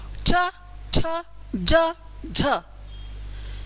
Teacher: इनको बोलते समय वायु मुंह से बाहर संघर्ष करके आती है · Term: स्पर्श संघर्षी वर्ण, सपर्श संघर्षी वर्ण